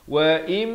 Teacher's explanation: Daripada wa in, asalnya hamzah baris bawah bertemu nun bunyi in. Tapi bila datang mim, kita terus masuk berserta dengung, jadi wa im, dua harakat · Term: idgham bi gunnah